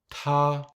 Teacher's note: We must pronounce the letter T clearly with a little explosion of air.